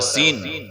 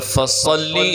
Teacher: صفت کا فرق ہے، ایک ذرا پہلوان ہے، ایک پتلا دبلا ہے۔ سین پتلا دبلا باریک ادا ہوتا ہے، صاد ذرا موٹا ادا ہوتا ہے